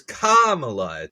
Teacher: But hers Kamala Khan, hers is Kamala. The emphasis is on Kamala. The first syllable.